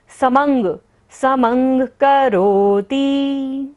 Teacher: म के ऊपर बिंदी है और बाद में क्या आ रहा है, क, तो अंग की तरह पढ़ना है हमें यहाँ पर बिंदी को